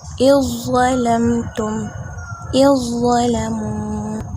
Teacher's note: Okey, yang pertamanya zal diidghamkan kepada za · tidak didengungkan, tidak diidghamkan pada huruf zal, tapi didengungkan pada huruf za. Maka zal tidak boleh diidghamkan, tetapi za yang diidghamkan. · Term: idgham kamil